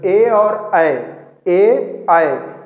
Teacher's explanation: तो देखेंगे हमारा कंठ और तालु दोनों सक्रिय रहता है इसके उच्चारण में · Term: कंठ तालव्य